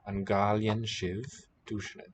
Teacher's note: So basically it's a K, voiceless aspirated. Here the mutation triggers voicing, K to G.